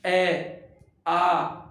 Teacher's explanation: उच्चारण कर होठों का आकार गोल नहीं होकर के होठों का ऊपर नीचे फैल जाना